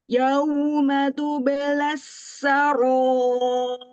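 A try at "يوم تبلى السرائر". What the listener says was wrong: Coba Ibu ro-nya turunkan ujung lidahnya. Roh. Ro. Roh. Roh.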